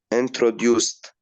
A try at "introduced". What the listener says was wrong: Introduced. Amazing.